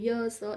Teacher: ય અને સ એ શું છે એનું ઉચ્ચાર સ્થાન તાલુ છે અને એ તાલવ્ય